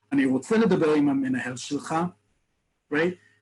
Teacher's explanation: The words get elided, they get mushed together because I'm heated up in the moment, but I also make it very definitive at the end. No uptalk, no question tone at the end, it's firm.